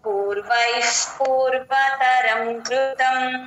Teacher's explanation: పూర్వై తర్వాత ఉన్న విసర్గ F sound చెప్తాం